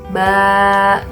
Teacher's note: fathah tapi hurufnya itu dibacanya panjang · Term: fathah panjang